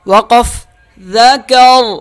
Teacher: را موٹا ہو جائے گا وقف کی صورت میں